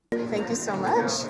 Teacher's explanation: Notice how she lifts the pitch at the end. And a lot of times that indicates this kind of friendliness, or I'm not threatening here by raising my pitch.